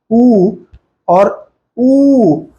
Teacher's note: वृत्त बनता है जैसे उच्चारण करके देखेंगे उ और ऊ तो होठ का आकार गोल हो जाता है और उसी को हम वृत्त कहते हैं